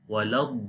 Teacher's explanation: Okay, so and dad also we read bold, and after the dad there is alif, which is alif madda. Also alif madda is coming after fatha sign, so we long here 1 second.